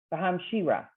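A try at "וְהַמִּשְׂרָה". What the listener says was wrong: Hamis. mem has the mem is the one with the vowel, and the sin has no vowel. So hamisra. I think you knew what you were reading, but your mouth was not cooperating.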